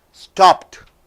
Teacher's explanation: the verb ends with unvoiced consonant p after p if d comes e d is not given a separate sound